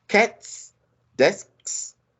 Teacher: the nouns they end in voiceless consonant sounds